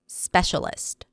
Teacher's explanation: Stress is on the first syllable.